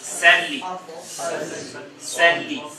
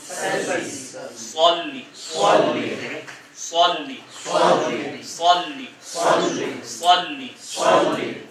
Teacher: فرق یہ ہے کہ سین کا تلفظ باریک ہے، مطلب صاد کا تلفظ پرحجم ہے، بھاری ہے